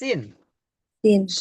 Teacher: pakainya ketemunya ujung lidahnya sama gigi dari bawah